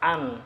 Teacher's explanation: Nah, dalam pelafalan ain, an tersebut menggunakan fathah pendek gitu, an tidak panjang gitu